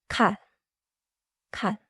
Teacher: The start is light, not breathy, not squeezed. In English this can sound between G and K, but do not force an English G. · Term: plain